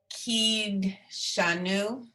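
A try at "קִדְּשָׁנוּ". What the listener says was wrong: It's ki de. right, ki de shanu, right. It's a sounded shva.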